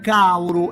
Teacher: qui di nuovo passiamo al dittongo AU, vedete, AL, caldo, diviene cauru